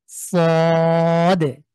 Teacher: দালের উপরে অক্ষ হচ্ছে, যদিও কলকলা অনেকে হয়তো বুঝবে না। শেষে সদ, শেষে দাল আছে, একটু যদি চেষ্টা করা যায় একটু ধাক্কা দিয়ে পড়বেন